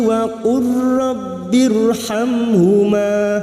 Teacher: memasukkan huruf mati yaitu huruf lam sukun kepada huruf berikutnya yaitu huruf ro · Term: idgam mutaqoribain